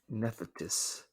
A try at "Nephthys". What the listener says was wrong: Yeah, it's pronounced Nephthys. No, not Nephthys. You're putting a T in. It's Nephthys.